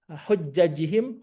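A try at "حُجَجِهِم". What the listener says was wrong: Pendek hujajihim.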